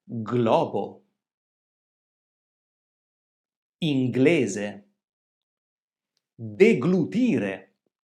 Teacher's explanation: Ma prima abbiamo detto che ci sono alcune parole in cui la successione delle consonanti GL si pronuncia come due suoni distinti.